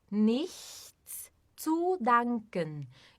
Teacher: a gente faz o som do ich, que é com a língua atrás dos dentes inferiores